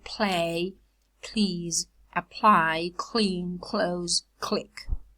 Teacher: that clear lateral is devoiced after aspirated voiceless plosives in stressed syllables